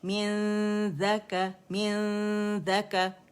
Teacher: من ذا, ذیل کے مخرج کے قریب جائیں گے, اسے ٹچ نہیں کریں گے · رائٹ اوے حرف اخفا کے مخرج کے قریب جاتے ہیں, غنہ ریٹین کرتے ہوئے, نون کو چھپاتے ہوئے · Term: اخفاء حقیقی